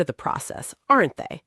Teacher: Down on aren't they? It's almost a statement.